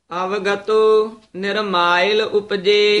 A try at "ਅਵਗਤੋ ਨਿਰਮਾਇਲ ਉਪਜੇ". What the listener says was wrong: ਇਸੇ ਤਰ੍ਹਾਂ ਅਵਗਤੋ ਹੀ ਪੋਲਾ ਉਚਾਰਨ ਕਰਨਾ ਹੈ। ਅਵਿਗਤੋ ਨਹੀਂ ਬੋਲਣਾ। ਅਵਗਤੋ ਨਿਰਮਾਇਲ ਉਪਜੇ।